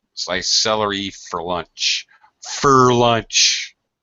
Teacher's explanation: that reduction sounds like fur instead of for.